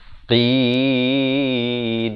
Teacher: qaf makhrajnya dipangkal lidah